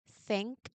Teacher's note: When you produce the sound, the only thing you should hear is the sound of air moving out of your mouth. You can practice this sound by focusing entirely on your breath. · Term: voiceless th